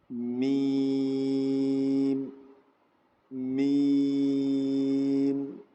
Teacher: میم کے جو نکلنے کی جگہ ہے وہ دونوں ہونٹوں کا جو ڈرائی پارٹ ہے، جو سوکھا ہوا حصہ ہے باہر کا، وہ آپس میں ملیں گے تو ایگزیکٹ میم نکلے گا